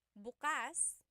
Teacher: If you say bukas the emphasis is on the second syllable that means open.